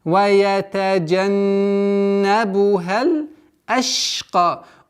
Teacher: У звука шин есть свойство тафаши. Удерживаем.